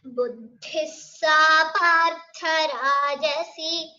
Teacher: So those shouldn't be prolonged. Only the rajasi should be prolonged because it's a dirgha.